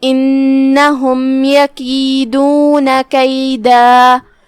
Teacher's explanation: ہم اس پہ رکیں گے تو مد الف سے رکیں گے. آخری میں ہم اپنی آواز 2 مد کے برابر لمبی کریں گے